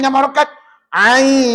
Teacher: madnya ya nampak huruf ya ni dan nilai harakat pada Ain oleh kerana dia ada tanda pemanjang ulama kata kamu kena baca enam enam harakat